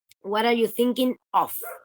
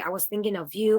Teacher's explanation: instead of with a schwa, it would be of with the lot vowel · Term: stranding